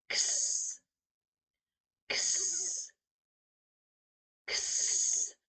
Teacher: it's almost like 2 sounds together, the K sound and the S sound, because the sound for X is X, X, X.